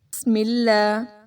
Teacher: بسم اللہ، با دونوں ہونٹوں کو ملا کر پڑھیں، اور اس میں لام جو ہے وہ باریک پڑھا جائے گا